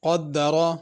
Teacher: قدر قاف بڑا ہے اور اس کو بھی پر کرنا ہے، را کو بھی پر کرنا ہے۔